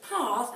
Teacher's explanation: In the south of the country, we tend to say it as path, and it sounds like there should be an R in there as in an AR sound, but there isn't.